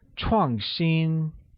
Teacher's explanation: 创新 is pronounced with a falling tone on A and a high level tone on I.